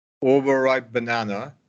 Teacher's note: Just like D and T, P and B will combine too.